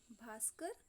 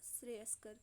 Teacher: यहाँ भी देखिए क्या हुआ है, विसर्ग के पहले तो बड़ा आ है और विसर्ग के बाद का भी है, पर यहाँ पर विसर्ग ज्यों का त्यों ना रहकर सा में बदल गया, इस वजह से ये भी अपवाद में है।